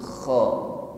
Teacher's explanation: Ya, ada ngorok tetapi halus keluar dari tenggorokan paling ujung. Kho. Kalau kita keluarkan huruf kho dari tenggorokan paling ujung, kho, maka ngoroknya suaranya lembut.